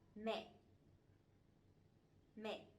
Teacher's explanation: But this one has the dot, the dấu nặng, the strong tone, so it has to be down and it has to be stronger a little bit